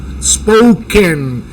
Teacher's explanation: Entonces la O cuando hay más vocales en esa palabra suena OU